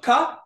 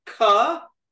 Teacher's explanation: So ka, no breath comes out. Ka, a lot of breath comes out. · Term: aspirated